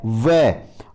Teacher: व का उच्चारण स्थान दंत ओष्ठ, दांत और ओष्ठ होंगे